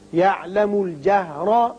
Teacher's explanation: را کے اوپر زبر ہے، اس کو پر پڑھیں گے